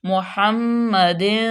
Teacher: میم مشدد، میم پہ غنہ پیدا کریں گے